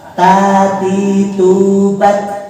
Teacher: Ujung lidah menempel ke pangkal gigi seri atas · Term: huruf ta